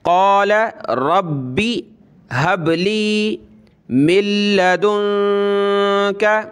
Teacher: دال نون پیش دون کریں گے اور نون پہ ہم نے ناک میں آواز پیدا کرنی ہے